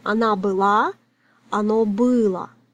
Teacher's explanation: Because O is not stressed it sounds like A. So the difference is only in the stress mark.